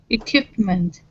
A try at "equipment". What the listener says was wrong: Not kip, but quip. Quip. So it's actually a oo-i. Quip. So that you got to slow it down to hear the oo.